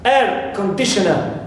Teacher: we stress first part always air